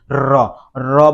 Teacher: যেমন কোন উচ্চারণ করে আমাদের জিহ্বা মুখের মধ্যে কম্পন সৃষ্টি হবে, বাকযন্ত্রের মধ্যে র, র বলে জিহ্বা, দেখো জিহ্বা হচ্ছে জিহ্বা কম্পন করে, তাহলে রয় হবে কম্পনজাত ধ্বনি।